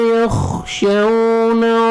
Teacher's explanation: خواہ کو موٹا کر کے پڑھنا ہے، شعون واو لین ہے، نرمی سے ادا کریں گے اور واو پہ لپس کو صحیح راؤنڈ میں لے کے جائیں گے تاکہ واو اچھی طرح ادا ہو۔